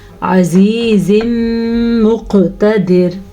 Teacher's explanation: وقف کرے یا نہ کریں، دونوں صورتوں میں را باریک پڑی جائے گی